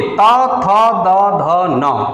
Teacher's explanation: दंत इसका उच्चारण स्थान है त वर्ग का, क्योंकि त वर्ग के जितने अक्षर हैं, देखिए आप बोलिए, त बोलिए, तब भी जिह्वा जाकर के दांत से लड़ जाती है। त, थ, द, ध, न, ये सभी दंत से उच्चरित होते हैं।